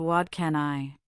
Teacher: In fast speech, what can I often blends into what can I. The T sound in what becomes a soft D because it's followed by can. This is called assimilation.